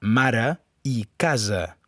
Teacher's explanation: Les vocals A i E, en posició àtona, se pronuncien de la mateixa manera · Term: vocal neutra